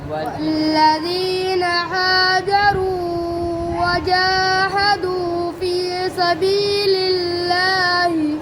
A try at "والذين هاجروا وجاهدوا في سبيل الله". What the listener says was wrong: अब हाजरू को ज़्यादा लंबा कर रहे हो आप पढ़ो भाई